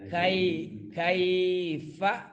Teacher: یا ساکن ہے اور یا ساکن سے ماقبل حرف کاف ہے، کاف کے اوپر کیا ہے؟ زبر ہے. تو کیا ہوگا؟ یا لین ہوگا. اس کو تھوڑا سا لمبا کریں گے.